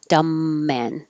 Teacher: The B is silent, so you're really connecting the M.